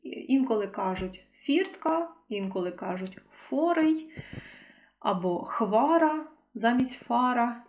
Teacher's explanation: цей звук ф замінюють на х